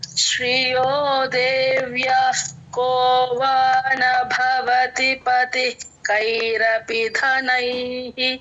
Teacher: క ముందు విసర్గలండి హచ్ లాగా అః సగం విసర్గ చెప్పాలి